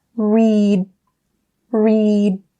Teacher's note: You should still be able to feel that small vibration until you stop that D sound. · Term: stop D sound